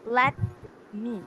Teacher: Let is the unstressed syllable, while the me is the stressed syllable. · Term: I am